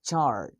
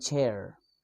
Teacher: according to places of articulations the sound is post alveolar sound and according to manner of articulations the sound is Africa the · according to manner of articulations, the ch sound is affricate. The ch sound is voiceless. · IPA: /tʃ/